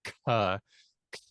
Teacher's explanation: When you say a k sound in English, it sounds like k. And what I'm doing is I'm saying k with a puff of air. That's a normal sort of pulmonic plosive k.